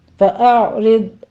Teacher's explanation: اعرض پہلے حمزہ کی آواز، پیچھے عین ساکن کی آواز آئے گی، آپ نے عین کو سٹاپ کرنا ہے، اس کے اوپر قلقلہ نہیں کرنا، اسی طرح سے ضاد کو بھی آپ نے پر پڑھنا ہے اور اس کے اوپر سٹاپ کرنا ہے۔